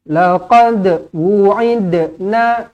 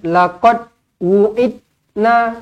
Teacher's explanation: Dal mati dilantunkan qalqalah sughra